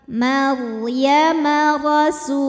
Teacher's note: Ra sukun dibaca secara tafkhim. Sebab ra sukunnya ini diawali dengan huruf berharokat fathah. Cara membacanya ditebalkan, pangkal lidah kita dinaikkan.